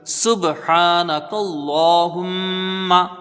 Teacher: کی مقدار رکھیں گے، ہا کو میم سے ملایا جائے گا، میم مشدد ہے، یہاں پر ایک الف کی مقدار غنہ ہوگا